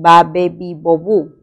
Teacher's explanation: Este sonido es un sonido oclusivo, bilabial y sonoro.